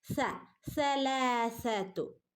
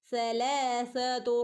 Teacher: സന്റെ ഉച്ചാരണം നമ്മുടെ നാവിന്റെയും പല്ലിന്റെ ഇടയിലൂടെ കാറ്റ് പോകുന്ന രൂപത്തിൽ ആവണം